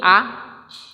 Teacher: मुंह पूरा का पूरा खुल जाता है, मतलब पूरा विवृत हो जाता है, फैल जाता है, पूरा खुल जाता है। तो यह विवृत है।